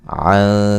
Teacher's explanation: عن کا نون ساکن کا باریک اخفا ہے